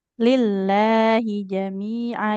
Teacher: Lafaz Allah itu walaupun nggak ditulis di situ panjang, tapi lamnya panjang.